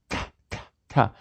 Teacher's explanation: The T and the D are alveolar stops.